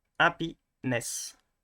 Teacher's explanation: we're going to stress on the end so Happyness so I'm putting an apost here to indicate that